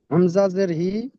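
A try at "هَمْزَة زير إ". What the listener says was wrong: হামজা জের ই, হি নয়।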